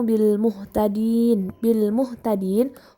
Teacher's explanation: hukum tajwidnya adalah mad arid lis sukun, karena terdapat huruf mad yang jatuh sebelum huruf yang diwaqaf, dibaca panjang 2-6 harokat.